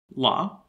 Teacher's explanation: the lateral approximant la